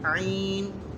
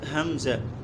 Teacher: عین کی آواز بغیر جھٹکے کے ہوتی ہے، اور حمزہ کی جو آواز ہے وہ جھٹکے سے ادا ہوتی ہے، جھٹکے والی ہوتی ہے.